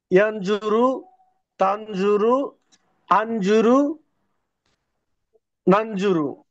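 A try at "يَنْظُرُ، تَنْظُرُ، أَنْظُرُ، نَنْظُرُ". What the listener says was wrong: Good, আবার।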